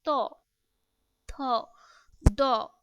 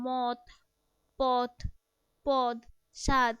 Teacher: জিভের সামনের অংশ দ্বারা উপরের পাটি দাঁতে নিচের অংশকে স্পর্শ করে দন্তধ্বনিগুলো উচ্চারণ করে